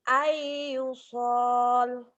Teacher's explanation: Bunyi nun matinya, bunyi n-nya hilang menjadi huruf di depannya. Bunyi n kalau ketemu ya jadi y. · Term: idgham